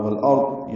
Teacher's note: والارض میں لام ساکن پہ اظہار قمری ہے، را ضاد دونوں پر ہیں، وقت کریں تب بھی ضاد پر ہوگا